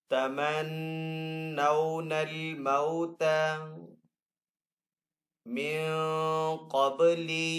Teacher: نون ساکن کے بعد یہاں پہ قاف حروف اخفا میں سے تو یہاں پہ اخفا والا غنہ کریں گے. قاف حروف مستعلی میں سے تو قاف کو یہاں پہ پر پڑھیں گے.